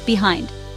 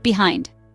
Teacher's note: 2 syllables. Stress on second syllable.